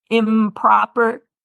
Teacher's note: some other examples are improper, where the M and the P are in the same place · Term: co-articulation